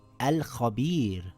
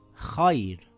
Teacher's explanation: It reads as al-khabir with a light Ra, and here it reads khair with a light Ra.